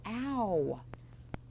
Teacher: You almost hear at the end of ow, you almost hear the w.